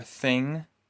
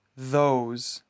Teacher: Afterwards, you blow air out of your mouth. Th is pronounced as voiceless, and th is pronounced voiced.